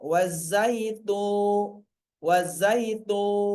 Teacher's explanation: Kalau di sini contoh berikutnya wazaitu tuna tu. Nah, tu jadi panjang gara-gara ada wawunya mati. Sehingga tunya jadi panjang.